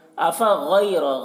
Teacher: गैन को पुर पढ़ेंगे, गैन हुर्फ़ मुस्तालिया में से है, और रा को पुर पढ़ेंगे, रा के ऊपर ज़बर है।